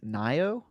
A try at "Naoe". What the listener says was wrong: I think you pronounce all the letters usually, and so I think it's probably like Nioe.